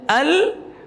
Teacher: Akan tapi kita baca al, udara lewat sampingnya, al lewat samping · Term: lam